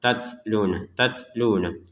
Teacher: Huruf ta-nya, ya, kita ada nafas keluar